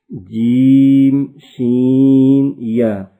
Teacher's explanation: کاف زبان کی جڑ اور تالو کے سخت حصے سے ادا ہوتا ہے۔ جیم شین یا زبان کے درمیان اور تالو کے درمیان سے ادا ہوتے ہیں۔